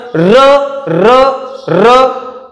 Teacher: पाठीमागून जीभ येते आणि व्हायब्रेट होते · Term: कंपित वर्ण